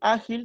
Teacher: se sitúa la sílaba tónica en la penúltima posición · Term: palabra grave